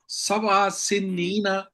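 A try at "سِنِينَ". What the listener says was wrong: آپ نے سنینا پڑھا ہے، نون کے اوپر شد نہیں ہے، بغیر شد کے پڑھے. سینینا.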